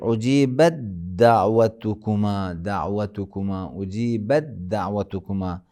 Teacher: یعنی تے کو بالکل جو ہے بعد والے دال میں ادغام کیا جاتا ہے